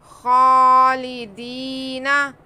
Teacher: खालिदीना, खा पे खड़ा ज़बर, खा को भी खींचेंगे। उसके बाद या साकिन से पहले ज़ेर है, या मद्दा है, इसे भी खींचेंगे।